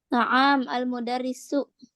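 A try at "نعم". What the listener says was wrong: Hah? Naam panjang gitu, naam gitu.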